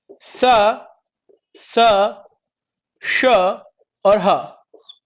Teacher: जब इन ऊष्म व्यंजनों को जब आप बोलते हैं तो हल्की सी गर्म प्राणवायु निकलती है, थोड़ी सी गर्म प्राणवायु निकलती है, इसीलिए इनका नाम ऊष्म व्यंजन पड़ गया।